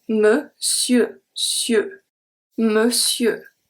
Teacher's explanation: So, the EU is not going to be a closed sound. It's the same one as a P, because the R at the end is not pronounced.